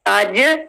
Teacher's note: देखिए चे साउंड नहीं आ रही, क्लियर जीम लग रहा है।